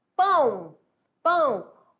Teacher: pão o a é vogal e o o o é semivogal quando eu falo pão o com som de u